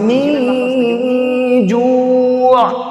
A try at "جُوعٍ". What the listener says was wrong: জু নাকে গেছে কেন মাদেটা জু এটা মা হাওয়ায় থাকবে মুখ ও গলা খালি জায়গায় থাকবে জু